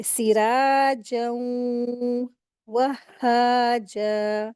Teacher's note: और फिर यहाँ पर इदगाम का रूल अप्लाई होगा, यरमलून का रूल अप्लाई होगा यहाँ पर, कि गुन्ना करके पढ़ेंगे। तनवीन के बाद वाव आया है, तो इसको गुन्ना करके मिलाकर पढ़ेंगे।